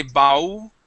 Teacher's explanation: You tend to say bau, okay, and pronounce the L like an oo sound